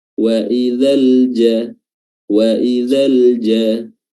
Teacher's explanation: nafas yang keluar ketika melafazkan huruf jim itu sangat tipis atau sangat sedikit. Bahkan kalau bisa jimnya dilafazkan dan tidak ada keluar hams, itu lebih fasih, lebih fasih.